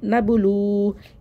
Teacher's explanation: वाव साकिन से पहले पेश होती है, वाव मद्दा होता है, इसको एक अलिफ पर खींच के पढ़ते हैं